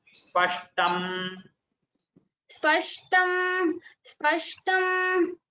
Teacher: No, it is not. Takara is not Mahaprana.